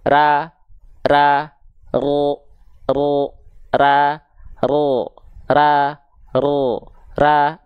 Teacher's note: kalau misalnya dia keluar vokal Oh pangkal lidah dia naik bibirnya dia enggak berubah